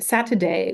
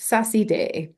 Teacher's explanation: instead of getting something like um Saturday, we get Sassy Day. Um so, we get lenition of t here. Similarly for uh kitchen, instead of um Kichimi, we get Kissimi.